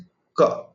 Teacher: When I say ka, which is the first consonantal sound in the Sanskrit Varnamala. When you articulate the sound ka, you can see the root of the tongue comes in contact with the soft palate.